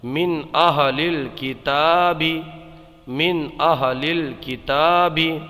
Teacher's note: یہاں پر اس کو تا کو ایک الف کھینچ کر کے پڑھیں گے کیونکہ تا کے اوپر کھڑی حرکات میں سے کھڑا زبر ہے